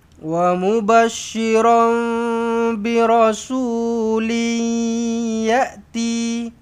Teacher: Bila jumpa dengan ya senyum dengungkan dua harakatlah. Birasulin yati dua harakat asli.